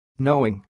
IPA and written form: ˈnoʊɪŋ (knowing)